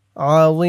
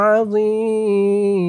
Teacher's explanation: জের মি আযীম এখানে 3 আলিফ টান হবে অক্ফ করার কারণে জেরের পরে ইয়া সাকিন এক আলিফ টানটা 3 আলিফ টান হয়ে যাবে আযীম শেষে মিমের নিচে জেরটা সাকিন হয়ে যাবে লা হাওলা ওয়ালা